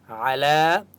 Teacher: आइन की आवाज़ हलक से निकालेंगे, लाम के ऊपर खड़ ज़बर है, एक अलिफ की मक़दार खींच कर पढ़ेंगे, इस या को नहीं पढ़ेंगे।